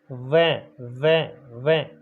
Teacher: ऊपर वाले दांत हैं नीचे वाले होठ पर आकर टिकते हैं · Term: दंतोष्ठ